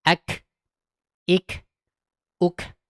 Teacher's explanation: Ketika sukun dia keluar udara. Contoh, ak ik uk. Tapi jangan berlebihan. Ak, ik, ukh, enggak boleh ya. · Nah, ini perbedaan kaf dengan kof yang signifikan. Ketika sukun, dia keluar udara.